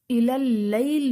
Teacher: الیل میں یا ساکن سے پہلے لام پر زبر ہے تو یہاں پر یا لین کا قاعدہ، اور وقف کی صورت میں ہم لام کو ساکن کریں گے تو یہاں پر مد لین عارض کا قاعدہ ہوگا جسے 5 سے 6 الف کی مقدار تک کھینچ کر پڑھیں گے